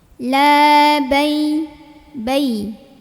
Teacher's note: huruf lam dipanjangkan 2 harokat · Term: mad tabi'i